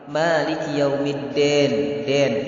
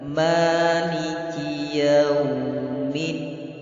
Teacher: Dan din itu juga harus dibaca jelas, tidak boleh dibaca imalah.